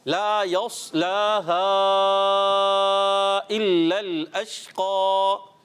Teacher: لا پر کھڑا زبر ہے ایک الف کھینچیں گے